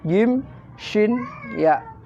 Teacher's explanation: Ini keluarnya adalah lidah bagian tengah dengan langit-langit yang lurus di atas.